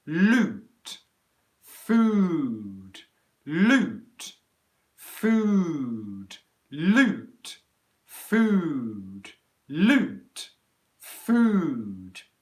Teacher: you should be able to hear the oo gets compressed and it becomes shorter